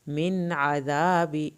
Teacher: یہاں پہ من پڑھا جائے گا، غنہ نہیں ہوگا، اگلا لفظ آئین سے شروع ہو رہا ہے۔ عذاب یومئذ، یہاں پہ ایک الف کے برابر دیر لگے گی، چھوٹی میم کے بعد با ہے۔